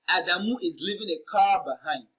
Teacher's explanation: The word receiving the emphatic stress here is car.